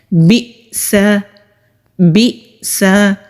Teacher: حمزہ ساکن ہو تو وہاں پر ہم جھٹکے کے ساتھ حمزہ کو ادا کرتے ہیں